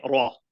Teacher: You raise the back of the tongue. So you don't say ri, you say ra. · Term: heavy ra